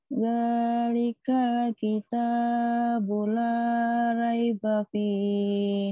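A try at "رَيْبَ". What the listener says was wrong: jangan rai. Raiba fih.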